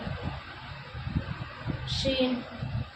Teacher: شین کا مخرج زبان کا بیچ اور اس کے مقابل اوپر کا تالو